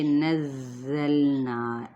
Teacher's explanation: زا سفیل لیٹر ہے، اس پہ تھوڑی سی شدت کے ساتھ ادائیگی کریں اور سفیر ضرور لانے ہیں